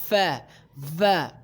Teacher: नीचे वाला होंठ आपका ऊपर वाले दांतों से जब टच होता है, जिससे जो साउंड प्रोड्यूस्ड होता है उसे लाबायोडेंटल साउंड कहते हैं.